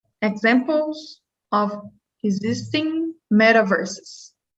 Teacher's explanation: So these ES endings on the plural, we need to get that extra syllable at the end.